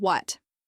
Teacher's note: The correct pronunciation begins with a clear W sound followed by a soft uh and a crisp T at the end.